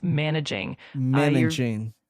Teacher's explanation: The emphasis is on the first syllable, so it's managing.